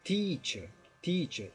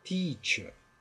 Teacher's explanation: Mas é importante relevar, né, que esse T é um T de verdade, é teacher, teacher, e o EA é um ditongo que é um I esticado, teacher, né, teacher.